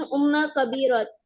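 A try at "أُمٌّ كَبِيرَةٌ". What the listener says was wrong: उम्मा नहीं, अम कबीरतुन, वरना अम्मा हो जाएंगी उम्मा तो।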